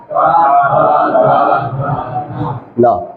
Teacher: न का जिस प्रकार से नासिका है उसी प्रकार से दंता भी है।